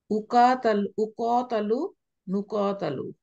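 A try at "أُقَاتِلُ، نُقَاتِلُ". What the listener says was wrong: Good, মাশাআল্লাহ।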